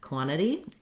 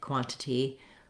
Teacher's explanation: The word quantity has first syllable stress, so we stress and lengthen on the quan syllable, and the letters QU make the sounds k and w together, qua, qua, typically in American English.